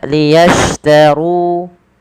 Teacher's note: tebalkan huruf ro-nya karena dia ro tafkhim